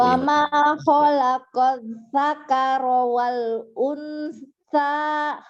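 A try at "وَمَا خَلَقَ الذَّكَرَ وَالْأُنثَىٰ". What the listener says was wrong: Lumayan, tapi zalnya masih kedengarannya kayak sakaro ya, masih ini. Zal.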